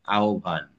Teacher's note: ব যাবে হয়ের সাথে মিশিয়া, তখন ওটা হয়ে যাবে ভ, তখন এটা উচ্চারণ হবে আহ্বান। আর ওটা যেহেতু পুরো করছি না তাই ওতে হস।